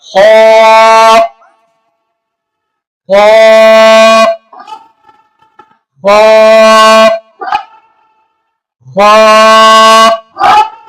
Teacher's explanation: خا ہمیشہ موٹا پڑھا جائے گا، منہ بھر کر